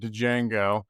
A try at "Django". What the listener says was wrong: Django. The D is silent.